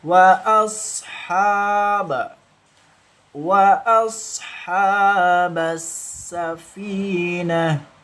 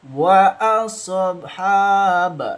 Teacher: Huruf sad sukun itu termasuk hukum bacaan rakhawah yang dialirkan membacanya